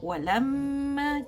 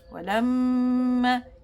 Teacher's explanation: Bila kita sebut walamma, cuba kita letak tangan dekat pipi kita. Walamma, kita akan ada rasa satu vibration yang halus a kan dekat hidung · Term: ghunnah